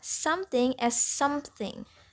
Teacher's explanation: the addition of a p sound after the nasal as in empty can also be heard in some speakers pronunciation of something